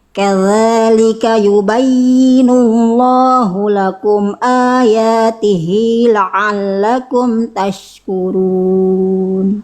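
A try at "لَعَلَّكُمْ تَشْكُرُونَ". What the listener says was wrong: Oke, nanti tinggal di lebih rileks lagi di ain. Ain itu rileks. Kadzalika yubayyinullahu lakum ayatihi la'allakum tashkurun. Cuman unsur ketergesa-gesaan aja.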